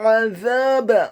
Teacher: Kata azab, huruf ainnya ditekankan keluar dari tenggorokan bagian tengah fathah 1 harokat. Huruf zanya dibaca tipis, tarqiq, lidahnya agak keluar sedikit, fathah 2 harokat karena setelahnya ada alif, dan huruf ba-nya dibaca tipis, fathah 1 harokat.